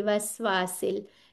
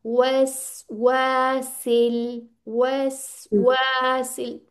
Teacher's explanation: वाव पे होंठ गोल होने चाहिए